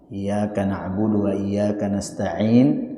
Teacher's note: ain ini juga keluar dari tengah tenggorokan